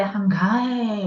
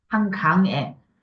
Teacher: 받침 이응은 받침에 그대로 자리 잡아가지고 안 움직여요.